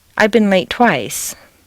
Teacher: it's too much work to say I've been a late twice so you say it almost as if it were a single word